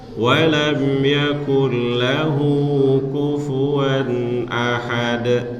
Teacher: Dia masuk tapi tanpa dengung ya. Kufuwan ahad itu namanya izhar, dibaca jelas, nggak boleh dibaca dengung.